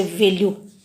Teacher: दंतोष्ठ जो है वो व जो अंग्रेजी से ग्रहण किया गया जो व्यंजन है, जैसे वैल्यू, यह दंतोष्ठ है